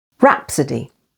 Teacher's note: Rhapsody with the stress on the first syllable